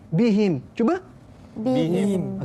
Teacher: Okey, jangan tukar kepada bifim. Kadang ada ha disebut macam fa.